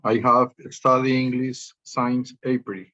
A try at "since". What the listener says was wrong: I have studied English since, no science, but since April.